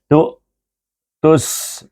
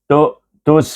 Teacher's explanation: Wala, kemudian tam baris depan itu, iaitu suku kata tu itu tak boleh baca tu, tetapi digabungkan dengan hamzah yang mati, bunyinya tu. Dari ta pergi ke mahraj hamzah pangkal halkum, pangkal halkum, jadi bunyinya tu, tus.